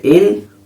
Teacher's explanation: انا، نون مشدد ہے، نون مشدد کو 2 مرتبہ پڑھا جائے گا، ایک مرتبہ پیچھے حرکت والے حرف سے ملا کر، اور ایک مرتبہ خود اسے، جیسے حمزہ نون زیر ان، اور پھر نون الف زبر نا۔